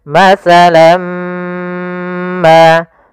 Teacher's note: tanwinnya masuk kepada huruf mim, tinggallah bunyi suara huruf min. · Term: idgham bi gunnah